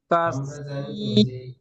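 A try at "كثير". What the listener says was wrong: না, কাশ, কাশি, এখানে টান নেই। জি, কি টান ওটা। জি, কাসীরুন তাখুদুনহা।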